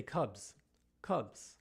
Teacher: Cubs, not cubus, right? The S receives some voice because the preceding sound, B, bu, is a voiced consonant.